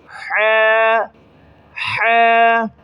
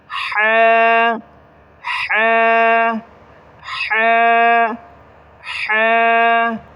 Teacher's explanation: حلق سے آواز نکالیں گے